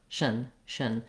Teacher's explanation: We actually don't have much vowel there. We want to move as quickly as we can from the SH sound to the N sound